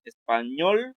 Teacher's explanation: Español, pues ñol es la que suena más fuerte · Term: sílaba tónica